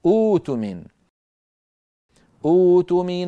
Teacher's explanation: على همزه قطع ساكنه فاننا عند البدء نبدل همزه القطع الساكنه نبدل همزه القطع الساكنه حرف مد مجانس لحركه همزه الوصل